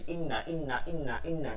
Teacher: ছিল এইটা কিন্তু নাই এটা টান নাই ইন্না ইন্না ইন্না ইন্না টান নাই খালি গুন্না হবে